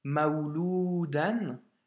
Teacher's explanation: dans Maouloudan, tu as à la fois le waouh en consonne et le waouh en voyelle.